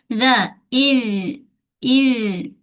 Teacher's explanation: Zal ujung lidah keluar sedikit dari sempadan gigi kita. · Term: Huruf zal